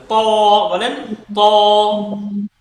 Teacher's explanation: ত তে গিয়ে জিহবার আগাটা উপরের দাঁতের গোড়ায় একটু ভালোভাবে ফিট করতে হবে